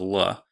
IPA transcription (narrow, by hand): ɫ